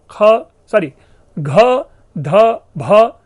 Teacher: घ, ध, भ, जिसे हम घोष और महाप्राण कहते हैं